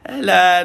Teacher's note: Ain bila baris di atas kita baca a. Kita baca tengah kerongkong dan mulut kita lebar.